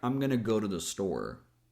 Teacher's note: the words here that deliver the message are go and store. So, they're the words that we're going to make stronger and longer. The other words become faster and lighter.